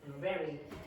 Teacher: the V sound is produced with the top teeth and the bottom lip, not the top lip. Okay, just the bottom lip.